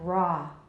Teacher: the vowel is ah, not ro